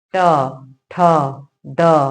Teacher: ये आपके मूर्धन्य वर्ण कहे जाते हैं और इनका उच्चारण मूर्धा है। जब हम बोलते हैं तो देखिए हमारी जीवा दांत के पीछे वाले दांत को नहीं टच करती है, लेकिन दांत के पीछे के हिस्से को टच करती है।